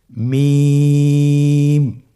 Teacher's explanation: হরফটির উচ্চারণ স্থান 2 ঠোঁটের শুকনো স্থান থেকে উচ্চারিত হয়। · মিম হরফটি উচ্চারণের ক্ষেত্রে অবশ্যই বারিক হবে, পাতলা হবে এবং 3 আলিফ টেনে উচ্চারণ করতে হবে।